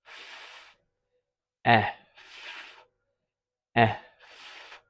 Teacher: And then the F, the unvoiced fricative made with the bottom lip squeezing the air against the bottom of the top teeth